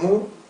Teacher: el muy, cuando se convierte en mu, o el fui, cuando se convierte en fi.